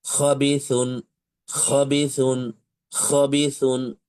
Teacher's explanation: ঠিক এই জায়গাতে একটু ব্যথা অনুভব আপনি করবেন। তাহলে খ অক্ষরটির মাখরাজ হচ্ছে কন্ঠনালীর শেষভাগ হতে উচ্চারণ করতে হয় এবং অবশ্যই এখ উচ্চারণ করার সময় একটু খরখরি রকমের আওয়াজ আপনাকে নিয়ে আসতে হবে।